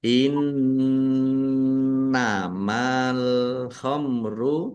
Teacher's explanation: nun tasdid dibaca ghunah atau mendengung ya. Ditahan biar tampak mendengungnya.